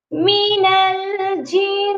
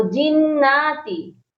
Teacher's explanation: نون کے اوپر کھڑی زبر پڑھتے ہیں، کھینچ کر پڑھ دیتے ہیں. تو یہ غلطی نہیں کرنی، نون کے اوپر حرکت ہے، مشدد نون ہے اور اس کے اوپر حرکت ہے.